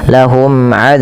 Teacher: Dijelaskan suara mimnya karena dia izhar syafawi